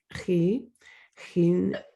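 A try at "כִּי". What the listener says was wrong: So that first word in line 8 is actually key, because there's a dot in there. It sounds more like a K.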